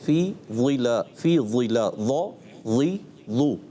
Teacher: اس میں ایک صفت استعلاء کے علاوہ صفت اطباق بھی پائی جاتی ہے، جس میں بہت زیادہ پر کرنا ہوتا ہے